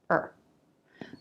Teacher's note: The vowel reduces to the schwa. You don't have to try to make the schwa, it gets absorbed by the R sound. Just make an R.